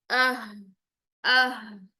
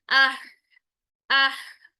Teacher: ठंडी सांस वाली आवाज रहेगी, एफर्ट रहेगी, जो जुबान का प्रेशर है वो पीछे की तरफ जाएगा। लेकिन इसमें जुबान का प्रेशर कोई पीछे की तरफ नहीं जाएगा, एपिग्लोटिस का कोई काम शाम नहीं होगा, सीधी डायरेक्ट आवाज मुंह से बाहर निकलेगी। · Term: गोल हा